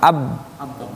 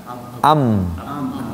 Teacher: Ada dua bibirnya rapat dirapatkan dan itu ba dengan mim